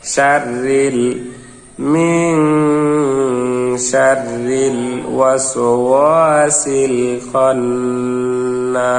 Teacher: এখানে র কিন্তু পোর হবে না, মোটা হবে না, অনেকে এটিকে ভুল করে পোর পড়েন, মোটা পড়েন, কিন্তু র যেটা বারিক হবে